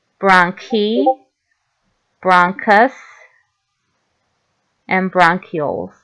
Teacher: Here, the CH is a k sound.